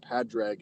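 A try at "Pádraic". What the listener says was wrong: Parig. They don't pronounce the D. it's not Padrig or Podrig or whatever. It's like Porgrig.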